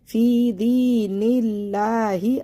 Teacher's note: یا کو یہ دونوں یا کو یا ساکن سے پہلے زیر، یا ساکن سے پہلے زیر، دونوں یا مدہ ہیں، ان کو کھینچنا ہے